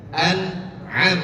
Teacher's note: Yang pertama tidak ditekan, yang kedua agak ditekan.